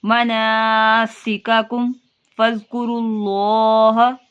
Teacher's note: میم ساکن کے بعد فا ہے، یہاں گنہ نہیں کریں گے